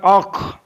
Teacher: खा is pronounced from the top part of the throat